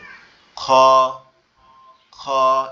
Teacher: খ এর উপরে একটা নোক্তা আছে, আর এটা আপনার মনে হবে যে আওয়াজটা গালের মধ্যে থেকে আসতেছে, গলার ভিতর থেকে